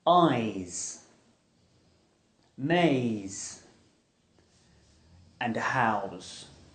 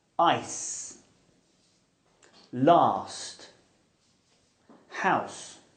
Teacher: With these sounds, air is pushed over our tongue and through our teeth. The z is voiced and s is aspirated.